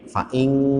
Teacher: Akhirnya ng ya, fa'ing. Nah, padahal bunyi eng itu nggak ada dalam bahasa Arab. Dia ada, tapi dalam bentuk samar. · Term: nun mati menjadi qaf